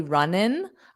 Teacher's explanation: some native speakers drop this G sound and say runnin'.